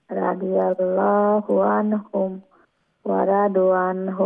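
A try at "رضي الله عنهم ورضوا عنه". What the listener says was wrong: রাদু, রাদু দাদ, দাদের পরে ওয়াও বাদ্দা আছে না, তাই দাদের উপরের যে পেশ, সেই পেশটার যেটা অরিজিনাল খাটো ছিল এখন একালিফ লম্বা হয়ে যাবে মাদের কারণে। ওয়া রাদু আন, এরকম।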